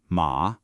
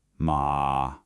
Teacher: The third tone, ma, is the trickiest. It dips down and then comes back up.